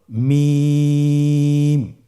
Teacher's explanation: হরফটির উচ্চারণ স্থান 2 ঠোঁটের শুকনো স্থান থেকে উচ্চারিত হয়।